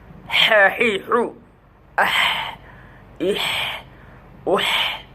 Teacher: হায়ের উচ্চারণ কণ্ঠনালীর মাঝখান থেকে চাপ দিয়ে শোষ আওয়াজের সহিত